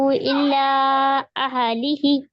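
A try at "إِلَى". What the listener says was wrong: इल्ला नहीं इला है वो इला इला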